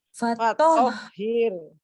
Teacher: Tapi dari fatoh ke hir itu harus nyambung terus suaranya.